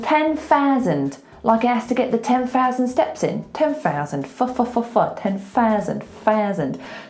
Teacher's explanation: the TH, when it's unvoiced, turns into an F.